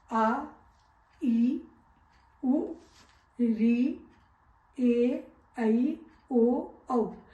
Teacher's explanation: दीर्घ स्वर का मतलब होता है बड़ा, जिसके उच्चारण में ह्रस्व स्वर का दुगुना समय लगता है, उसे हम दीर्घ स्वर कहते हैं।